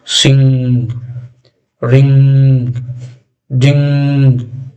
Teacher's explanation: so we are getting sound from our nose. That is why these are called nasal sounds which are three in number M, N and NG.